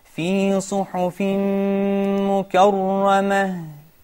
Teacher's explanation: make sure you give the ghunna of the idgham with ghunna